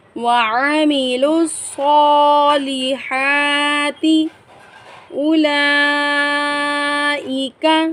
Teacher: اب اس کو جب ہم اگر ہم نے بالفرض وقف کرنا ہے تو ہم صالحات پڑھیں گے، تا کو ساکن کر دیں گے، اور اگر ہم نے وقف نہیں کرنا تو پھر ہم وَعَمِلُوا الصَّالِحَاتِ اولئک، یہاں پر بھی بڑی مد آئی ہے۔ بڑی مد کو ہم 5 الف کی مقدار کھینچ کر پڑھیں گے اور 1 الف کی مقدار کھڑی زبر کو کھینچیں گے۔